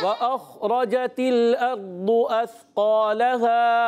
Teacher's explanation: वाव की अदायगी होंठों की गोलाई से अदा होता है। वाव जब भी अदा होता है प्यारे बच्चों याद रखें, वाव होंठों की गोलाई से।